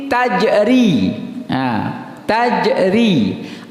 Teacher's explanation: Tajri, ro yang berbaris kasrah maka ditipiskan ri. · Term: ri tipis